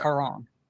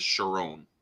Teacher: it actually be pronounced with a k sound in ancient Greek because there's no ch sound in ancient Greek, so it'd be pronounced Charon.